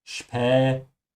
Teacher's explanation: pronounce the S here like a sh because it comes before a P